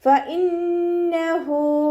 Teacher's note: ഫ ലൈറ്റ് ആക്കിയിട്ട് ഉച്ചരിക്കുക. നമ്മുടെ മേലെ മുൻപല്ലിൻ്റെ അറ്റം താഴെ ചുണ്ടിൻ്റെ ഉൾവശത്ത് നനഞ്ഞ ഭാഗത്ത് വെക്കുക